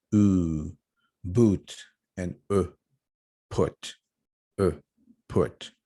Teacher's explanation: As you can tell, according to our vowel quadrilateral, we have these vowels located in the back of our mouth. So the tongue has to be, far back, and it is up high, like ooh. You're going to see the back of your tongue racing. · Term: back vowels